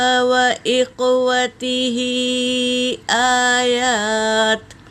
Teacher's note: واو اور تا حرکت ہے، ہا کے نیچے کھڑی زیر ہے اور اس پر مد ہے، مد منفصل، اسے 3 سے 4 الف کے مقدار کھینچیں گے